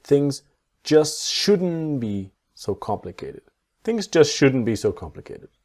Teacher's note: So the T in just is silent and the T in shouldn't silent.